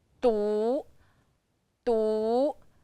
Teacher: De, wu, du. Du is the second tone going up. Du, du. Du means only, single, lonely.